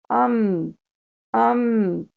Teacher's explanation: حمزہ کے ساتھ اگر میم کو ہم ساکن لگائیں، ام، ام، آپ کے ہونٹ بند ہوں گے اور ناک سے غنہ کی آواز آئے گی۔